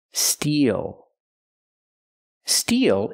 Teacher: the long e like green beans plus the dark L